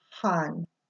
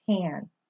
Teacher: aa is always pronounced ah never ever like a an apple or in hand